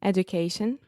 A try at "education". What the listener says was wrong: So I was almost hearing education with the do, but it was kind of right in the middle. But this is a really interesting thing in English because we say education. So you can imagine the word you is actually in there. So you. Education.